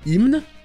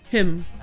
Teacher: en anglais, on ne prononce que le M